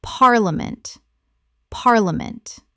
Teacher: 3 syllables in natural speech. The middle syllable collapses dramatically.